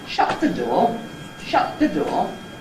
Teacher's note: ‘Shut the’ is the Head; ‘door’ is your Low Rise Nucleus. · So it could start with a high head, for example, and you know it's an accent because of the relative height of the pitch.